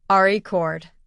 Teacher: stress on the first syllable